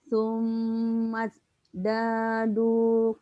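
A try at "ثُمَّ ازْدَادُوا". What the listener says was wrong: Sumatnya ada desis ya. Sumaz. Itu kan zai.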